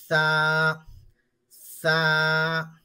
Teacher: अब देखो सा, सा का क्या है कि ऊपर के दांत और नीचे के दांत, ऊपर के दो बड़े दांत, नीचे के दो बड़े दांतों के बीच में से थोड़ी सी जबान को हम बाहर निकालेंगे और फिर बोलेंगे सा, सा।